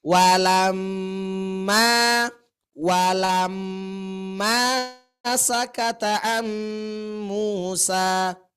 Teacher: yang ditahannya itu adalah bunyi emnya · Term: dengung